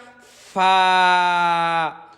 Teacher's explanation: নিচের ঠোঁটের পেট সামনের উপরে দুই দাঁতের আগার সঙ্গে লাগাইয়া